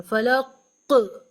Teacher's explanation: قاف پر جب جزم ہو تو وہاں ایک باؤنس ساؤنڈ سنائی دینی چاہیے